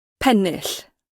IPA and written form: ˈpɛnːɪɬ (Pennill)